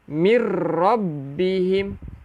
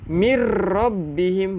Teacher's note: Idgham bila gunnah, nun mati ataupun tanwin bertemu dengan lam ataupun ra, iaitu memasukkan tanpa dengung.